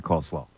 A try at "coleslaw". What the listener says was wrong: You said it coleslaw, you said. Yeah, you said it with a lot of emph.